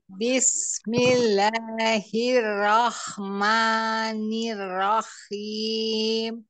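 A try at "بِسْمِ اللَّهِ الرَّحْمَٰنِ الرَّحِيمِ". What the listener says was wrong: Itu masih kohok. Haim, nggak apa-apa nanti dilatih, diulang-ulang. Seperti ha pedas. Nirrohim, haim, Nirnya nirro, ditasdikan dulu. Nirrohim, Ah ya, itu terlalu ke ho, terlalu diangkat itu.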